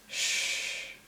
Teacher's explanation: Okay, so when you say sh, you can feel that your tongue is like, it's approaching to the palate to make the air that passes very narrow, the way very narrow. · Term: sh sound